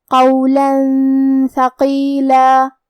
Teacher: ہم یہ تنوین کو چھپاتے ہوئے اور غنہ کے ساتھ یہ حکم کو ادا کریں گے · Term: حروف الاخفاء